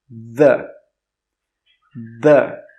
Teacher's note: the second way to pronounce TH is voiced. That means your throat will vibrate. It will move.